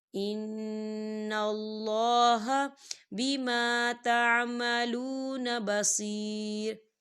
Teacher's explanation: یا ساکن ہے، یا ساکن سے پہلے زیر ہے تو یہاں پر یا مدہ ہے تو اسے دو حرکت کے برابر کھینچ کے پڑھا جائے گا